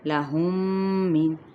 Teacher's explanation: میم ساکن کے بعد میم متحرک ہے تو ادغام شفوی